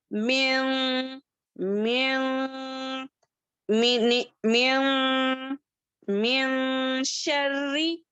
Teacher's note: हमारी आवाज को नाक में छुपाते हुए पढ़ना। ये खैशुम का लेटर है। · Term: इख्फा